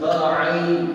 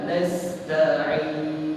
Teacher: tak terlalu tebal dan tak terlalu nipis. Kerana apa? Kerana ain berbaris bawah.